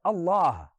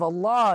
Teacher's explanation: lamb is now elongated from the fullness of your mouth and the ha is aspirated as a breath comes from you